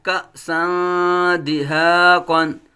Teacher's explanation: یہاں کأسن، حمزہ ساکنہ میں جھٹکا